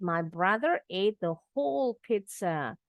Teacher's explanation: The first Z sounds like a T.